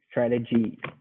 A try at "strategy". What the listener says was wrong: I wouldn't emphasize the syllable, but I would just say it maybe a little more clearly. Fully pronounce the E. Strategy. And you want to emphasize the A. Strategy.